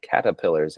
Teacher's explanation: I forget that there's supposed to be an R written there because I drop it myself. · dropping of R's is a very prolific feature of a lot of New England accents today. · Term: R dropper